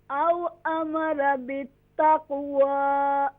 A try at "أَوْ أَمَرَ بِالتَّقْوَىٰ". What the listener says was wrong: را is more full mouth. أو أمر. أو أمر.